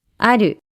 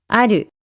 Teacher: ah do starts high and it goes down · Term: pitch accent